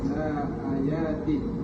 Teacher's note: ada mad badal dibaca panjang dua harakat